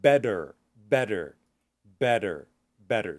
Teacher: when you're relaxing a T, like in the word better, for some people, like Americans, Canadians, we understand that as a D sound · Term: the flap